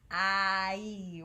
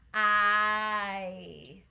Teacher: There's two vowel sounds glued together, I and E. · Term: diphthongs